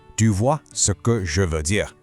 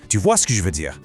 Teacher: It becomes "du vois ce que je veux dire". The e's are dropped, consonants just crash together, and it sounds like [music] one giant continuous word.